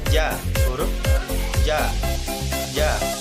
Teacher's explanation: Sifatnya nafas ditahan atau jahr. Yang kedua suara tertahan atau syiddah. Yang ketiga lidah di bawah istifal. Yang keempat terbuka antara lidah dan langit-langit atas infitah. Dan yang kelima memantulkan suara tambahan atau qalqalah